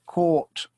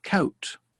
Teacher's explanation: the or is very small o starts tall and gets smaller